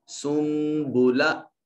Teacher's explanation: نون کو چھوٹی میم سے بدل کر سین کو میم سے ملائیں گے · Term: اقلاب